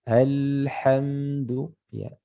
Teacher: Salah satu sifatnya huruf lam ini namanya at-tawassut. Dia pertengahan. Mengalir sebagian suara. Ya. Tidak syiddah, ya tidak ditahan sama sekali ya sehingga tidak mengalir.